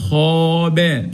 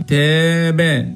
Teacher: لو كان حرف مفخم بنفخم ألف المد مثل خابا. لو كان حرف مرقق هنرقق ألف المد مثل تابا. ألف مرقق في الثانية لأن حرف التاء مرقق، ومفخم في الأولى لأن حرف الخاء اللي قبله جاء مفخم.